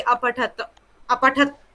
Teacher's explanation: अ नहीं बोलेंगे। मतलब मुंह नहीं खुलेगा। वहीं रुक जाएगा। त पे मुंह रुक जाएगा। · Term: हलंत